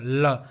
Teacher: तो हवा जो है किनारों से निकल जाती है, इसलिए इसको पार्श्विक व्यंजन कहते हैं